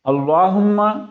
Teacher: اللہم ہم جب کہتے ہیں تو آواز ناک میں جاتی ہے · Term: غنہ